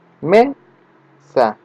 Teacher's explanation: La palabra me es la sílaba tónica. Por tanto, sa es atónica o átona y termina en una vocal, ¿no?